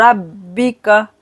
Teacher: बा पर जमाव करेंगे और मोटा पढ़ेंगे